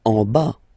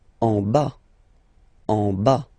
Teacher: Final S not pronounced.